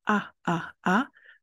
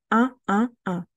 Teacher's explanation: facile de prononcer le son 1 c'est de prononcer la lettre A et ensuite d'ajouter une nasalisation en même temps donc a a a on ajoute la nasalisation 1 1 1